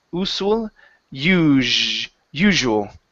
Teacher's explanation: this s sound, we're going to change that to a voiced s instead of usual.